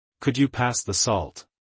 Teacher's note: demanding with falling intonation